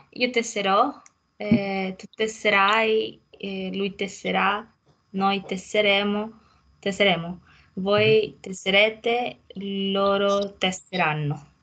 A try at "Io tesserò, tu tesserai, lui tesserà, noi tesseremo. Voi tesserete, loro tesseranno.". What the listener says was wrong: Mm-hmm. Sì. Perfetto.